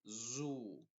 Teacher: tienes que eh apretar bien los labios y decir zu y hacer vibrar las cuerdas vocales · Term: Z inglesa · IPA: /zuː/